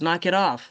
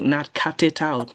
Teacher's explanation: You need to link, you know, changing the t to a du because it's a flap d. It's in the middle of two vowels.